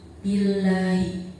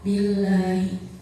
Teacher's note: Di situ ada lam jalalah didahului dengan huruf ba yang berharokat kasroh, maka cara bacanya tipis. Billahi. Hukum selanjutnya adalah hukum qalqalah. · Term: lam jalalah tarkib